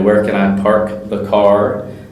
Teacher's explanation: we don't roll the r